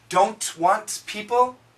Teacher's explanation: Just like in can't, the N cancels the T.